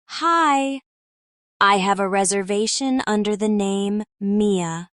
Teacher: Notice how under the becomes unda the.